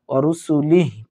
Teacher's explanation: যদি থেমে যাই তাহলে আমরা ওয়া রুসুলিহ পড়ব